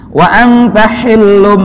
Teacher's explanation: Wa anta hillum, tuh tulisannya hillun, domah tain tuh hillun, tapi bertemu dengan ba. Maka ini cara membaca bunyi n-nya menjadi ditukar, hillun menjadi hillum ketika domah tain atau nun sukun bertemu dengan ba